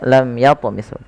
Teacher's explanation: Lam yatu, mim mati bertemu ya, dibaca dengan jelas suara mimnya tanpa ada penahanan dari bunyi mimnya. Tidak dibaca lam tapi langsung saja lam yatmishun. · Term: idhar syafawi